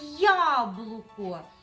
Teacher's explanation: і наголос на перший склад